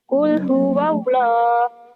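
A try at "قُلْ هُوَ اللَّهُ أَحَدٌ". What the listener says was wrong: Qul huwallahu ahad. Kenapa jadi qul huwallahu? Kan ada ahad ya.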